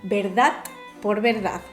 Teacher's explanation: entre hablantes catalanes es frecuente pronunciar la D final como una T por influjo del catalán